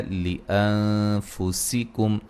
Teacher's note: نون ساکن کا یہاں باریک اخفا ہے ، ہو پہ مد جائز ہے، جیم پہ قلقلہ، غن را